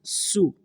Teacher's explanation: سو، اکیلی پیش آ گئی، اس کو لمبا نہیں پڑھنا، سو سیٹی کی طرح آواز آتی ہے سین کو ادا کرتے ہوئے